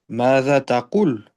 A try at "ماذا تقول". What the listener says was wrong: ماذا تقول؟ تقول. لا, fais la prolongation. Tu dis pas تقول. تقول.